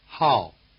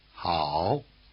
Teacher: the falling tone drops sharply through your full range, while the low tone spends most of its time at the bottom. It helps that the falling tone is the shortest tone and the low tone is the longest.